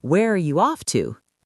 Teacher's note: Notice the falling intonation at the end because it's an information question.